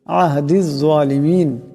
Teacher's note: এখানে জা মোটা আওয়াজে পড়তে হবে